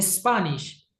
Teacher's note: Spanish, a pesar de que nosotros decimos e, lo esencial en la pronunciación es empezarlo como con un sonido de una serpiente, como un s.